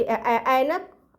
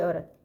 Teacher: जिनके उच्चारण के समय मुंह आधा खुलता है, लगभग आधा खुलता है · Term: अर्ध विवृत स्वर